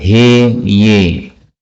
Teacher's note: Yang pertama pada ayat 1 ha ya boleh dibaca imalah he ye